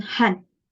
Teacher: it's a mid sound, which means that the oral cavity when we when we're trying to articulate this sound, is not too wide nor it's narrow.